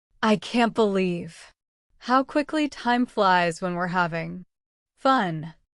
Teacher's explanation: Put emphasis on quickly to show surprise. Use a slightly rising tone on time flies to express excitement. Drop the G in having because.